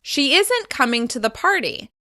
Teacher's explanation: As you can hear, I'm stressing the negative contraction.